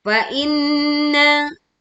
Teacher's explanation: dengungkan nun bertasydid dengan suara dengung yang sempurna karena suara kita masuk ke rongga hidung dengan sempurna